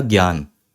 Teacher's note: यह जो संयुक्त व्यंजन है यह बना है ग और य से क्योंकि बोलते में ऐसे ही है